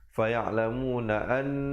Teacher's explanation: faya'lamuna an, di situ didengungkan 2 harakat